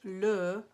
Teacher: le is almost a combination of the sound in cœur, heart, cœur, and a regular old schwa.